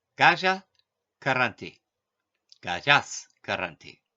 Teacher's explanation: One common change is that the visarga becomes sa if followed by the letters ka or cha. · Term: Visargasandi